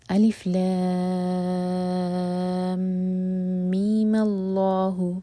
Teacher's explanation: ہم نے میم کو 2 حرکہ کھینچا اور پھر کنٹینیو کیا